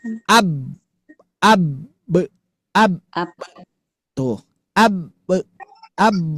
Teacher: Sama dengan ba. Ba dia jadi mantul karena kita buka tutup bibir.